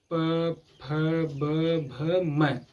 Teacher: ठीक है, देख रहे हैं जितना भी वर्ड है प वर्ग में, जिसको भी बोल रहा है हमारा ओठ जो है आपस में मिल रहा है। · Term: ओष्ठ वर्ग